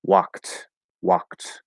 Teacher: So if I say walked, the K sound is voiceless, so we're going to ignore the E, there's no pronunciation of the E, and the D is going to be pronounced as a T because it's easier to say k, t, instead of k, d